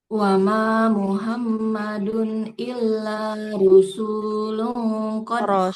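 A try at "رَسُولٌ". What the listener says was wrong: Rasul, bukan rusul, rasul.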